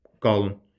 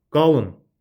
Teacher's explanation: bu sifət qalında vurğu düşür ının üstə. Feil olanda isə əmr şəklində düşəcək nəyin üstə? A-nın üzərinə.